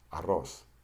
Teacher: Now, when you pronounce the single R, like this one in arco, you just flap your tongue once. When you pronounce the double R, you flap your tongue 2 to 3 times.